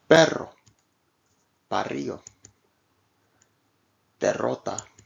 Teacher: the tongue is positioned just as with the single R except that it is held there briefly and allowed to Flap creating the rolling effect